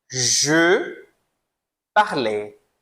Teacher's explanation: Lembrando que o je, ele é bem fechado.